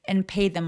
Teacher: and의 디발음은 잘 안 하니까 and pay라고 바로 연결해 주시고요